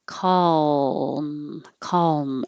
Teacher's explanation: the dark l which sounds like the evil l um the middle of the tongue rises